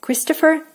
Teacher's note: the R at the end has to be pronounced as full R in the end in Russian equivalent.